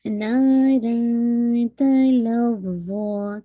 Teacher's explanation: ظا کو آپ نے ہیوی کرنا ہے 2 کاؤنٹ کے ساتھ